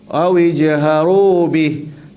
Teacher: Kalau sambung bihi panjang. Tapi kalau kita berhenti, matikan ha. Awi jaharu bih.